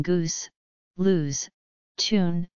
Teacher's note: a fronted pronunciation of the long OO sound in goose, lose, tune